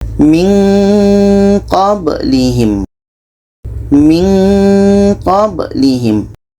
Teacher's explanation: Ketika kita menyebut nun, kita sudah merasakan huruf qaf. Maka seolah-olah ada bunyi eng di situ. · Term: ikhfa hakiki